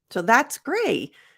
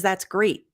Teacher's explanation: If you could take the T off completely, it's going to sound like gray.